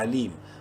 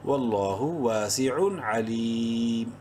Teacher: میم کی دونوں پیشیں اڑ جائیں گی اور یہ پڑھا جائے گا علیم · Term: وقفن